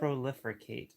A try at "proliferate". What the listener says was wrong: Prolificate. Why are you putting an extra R in it?